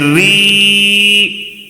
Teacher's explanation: یائے مدہ ہوگا. کیسے پڑھیں گے؟ ایک الف کھینچ کر پڑھیں گے. ری رایا زیر ری.